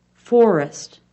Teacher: the F sound is made by closing the mouth almost all the way the top teeth are shown biting down on the lower lip